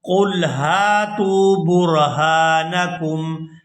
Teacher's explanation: ادا کرتے ہوئے لام ساکن کے ساتھ ملائیں گے، قل ہاتوا، یہاں ہا کو الف مدہ کی وجہ سے کھینچ کر ادا کریں گے اور آگے تا کو واو ساکن کے ساتھ ملاتے ہوئے کھینچ